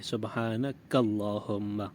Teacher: زبان کی جڑ کو تالو کے سخت حصے سے لگا کر کاف ادا کریں گے۔ سبحانک اللہم موٹا نہیں پڑھیں گے ورنہ ایک حرف دوسرے حرف سے بدل جائے گا۔